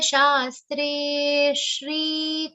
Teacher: Te is a long sound and it also has a subtle aghat of sha.